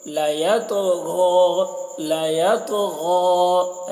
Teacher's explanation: حرف قلقلہ میں سے ہے، اس کے اوپر جزم بھی ہے، تو تو میں قلقلہ کر رہے ہیں اور غین کو کھینچ کر پڑھ رہے ہیں اور اسے پور پڑھ رہے ہیں